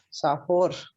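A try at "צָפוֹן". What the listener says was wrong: No, termina en una. Entonces esta es una nun sofit, la nun que va al final.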